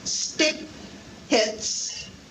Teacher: The second one, which is an unaspirated version of T, occurring in consonant clusters